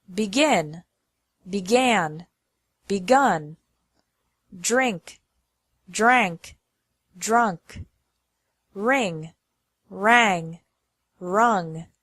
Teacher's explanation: the vowel changes from I to a to u